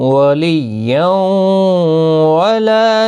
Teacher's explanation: ولیوں تنوین کے بعد یرمل ان کا واو آیا، ادغام مع الغنہ ہوگا. لا الف مدہ ہے، سی یا مدہ ہے، دونوں کو ایک ایک الف کی مقدار کے برابر کھینچ کر پڑھیں گے.